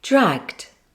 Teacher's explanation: Remember, there's only one explosion of air at the end.